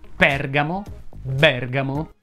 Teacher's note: medico si pronuncia con la e aperta